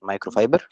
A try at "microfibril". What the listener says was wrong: A microfibril, not fiber, microfibril.